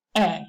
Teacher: The tendency is to make it a monophthong.